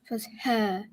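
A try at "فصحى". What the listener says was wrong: That's not a mint. What you did, fusha, is more like you had barbecue and you're like, "Ugh." Not barbecue, mint.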